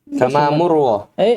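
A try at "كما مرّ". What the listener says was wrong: Bukan masalah murronya, masalah panjangnya tadi. Kama marra. Kama marra.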